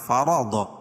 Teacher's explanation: فمن اخفا حقیقی، کیونکہ نون ساکن کے بعد حروف اخفا کے 15 حرفوں میں سے فا ہے. فرض، را کو پر پڑھیں گے اور ضاد بھی پر پڑھی جائے گی. را اس لیے پر پڑھی جائے گی، را کے اوپر زبر ہے، اور ضاد حروف مستعلیہ میں سے.